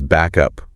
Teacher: Instead of a clear stop, back up, that final K sound just sort of attaches itself to up. So, it becomes back up. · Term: linking sounds